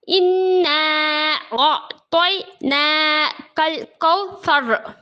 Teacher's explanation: رائے ساکنہ سے پہلے زبر را پر ہوگا، ہم را کو موٹا پڑھیں گے